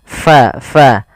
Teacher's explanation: alirkan nafas kita karena fa sifatnya sifat hamus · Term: sifat hamas